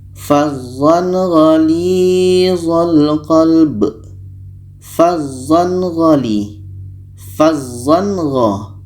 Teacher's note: Gha adalah huruf izhar halki, maka ketika tanwin bertemu gha, ini hukumnya izhar halki, dibaca jelas. Tanwin jelas, gha jelas, dan tidak ada dengung.